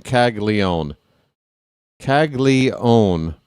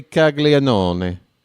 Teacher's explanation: How are you skipping that third syllable that's clearly in there?